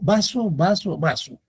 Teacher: la pronunciación igual de la v y la b